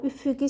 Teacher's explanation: Üfüqi bu sözdə, üfuqi sözündə ü uzanır. Bu sözümüz isə istisnadır.